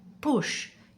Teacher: Lips together. No voice, just breath.